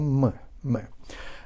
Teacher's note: We touch the lips together, we put the lips together, but we give air to the nasal cavity, and together with the voice, and we'll have M, M.